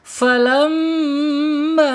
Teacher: Ketika ada mim bertasyid ditahan dua sampai 3 harakat. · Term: gunah